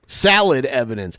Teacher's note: O sounds come out as A sounds, like solid is now salad